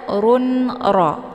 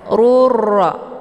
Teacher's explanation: Hukum bacaan idgham bila ghunah tiada berdengung.